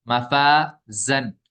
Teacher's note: مفازن میں الف سے پہلے فا ہے یہ باریک حرف ہے تو الف بھی باریک ہو جائے گا